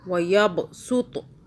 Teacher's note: یہاں پہ آپ نے سین کے ساتھ، سین کی آواز میں پڑھنا ہے، صاد کی آواز میں نہیں پڑھنا